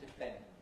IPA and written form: dɪˈp⁼end (depend)